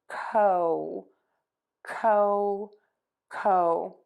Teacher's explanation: start with the k and then round the lips to move to that long o sound